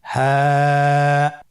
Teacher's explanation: হ্যাঁ হা হরফটি উচ্চারণ ক্ষেত্রে অবশ্যই বারিক হবে এবং 1 আলিফ টেনে পড়তে হবে।